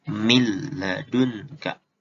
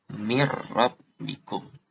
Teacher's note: Jadi kita langsung baca tasjidnya aja. Nun matinya nggak usah dibaca. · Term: idgham bilaguna